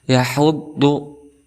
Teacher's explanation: Dia juga termasuk salah satu huruf hamas, maka ada nafas yang keluar, kemudian dia makhrajul huruf daripada ha ini berada di tengah-tengah tenggorokan atau disebut wasatul halqi